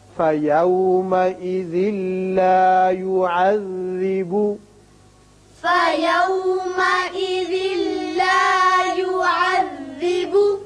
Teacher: یہاں ادغام بغیر غنہ ہوگا، ذال کی تنوین لام سے، یعنی ذال کی ایک زیر پڑھیں گے، نون کی آواز نہیں نکلے گی